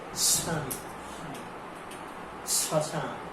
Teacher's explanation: শব্দের প্রথমে বফলা থাকলে বফলার উচ্চারণ হয় না, কিন্তু ঝোঁক পড়ে, মানে একটু জোর পড়ে।